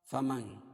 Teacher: فمن، نون ساکن کے بعد حروف اخفاء کے 15 حرفوں میں سے شین ہے، اس لیے ناک میں آواز کو چھپا کر پڑھیں گے